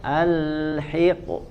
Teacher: Wa al ya hiqo, lamnya jangan ikut dipantulkan ya, jangan wa al hiqo ya, al hiqo huruf qaf yang dipantulkan ya dan dibaca tebal huruf qafnya